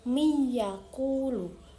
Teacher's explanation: nun dilebur dan didengung serta dibaca selama 2 harokat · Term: idgham bi gunnah